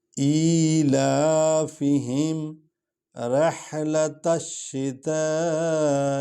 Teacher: شتا کو لمبا کر رہے ہیں، الف کو، الف پر مد ہے